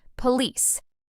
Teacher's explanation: A lot of learners put the stress on the first part, police, but native speakers stress the second part, police.